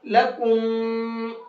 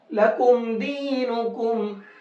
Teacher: جب میم ساکن کے بعد میں دال آیا تو اس میم کو اب صاف صاف پڑھیں گے، یہاں غنہ اخفا نہیں کریں گے۔